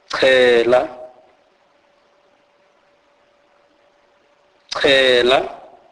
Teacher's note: This is the C sound aspirated